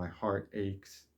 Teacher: you have two stressed syllables right next to each other all in one line